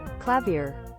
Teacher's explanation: American pronounces the r at the end more